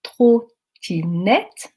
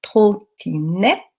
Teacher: dans le premier temps, la langue qui allait taper mon palais, alors que dans le deuxième temps, ma langue allait s'interposer